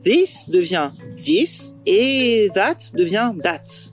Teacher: TH va devenir occlusif et prendre la forme soit d'un /t/ soit d'un /d/ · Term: TH stopping